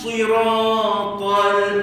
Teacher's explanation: Lam ada bunyi kat situ sebab ada tanda mati pada lam, maka hukumnya izhar. Jelaskan bunyi lam, elakkan dengung, elakkan qalqalah.